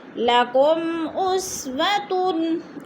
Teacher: حروف ہلکی میں سے حمزہ آ گیا ہے تو ادھر اظہار شفوی ہو رہا ہے، غنہ نہیں کریں گے